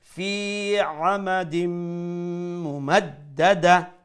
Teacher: নিচে তানবিন তানবিনের পরে লেটার মিম আইছে অর্থাৎ ইদগাম মা গুন্না আমরা তানবিনের সাউন্ডে নিয়া মিমর মধ্যে জয়েন করলুমু ঢুকাইলিমু আর এটা গুন্নার সহিত হইব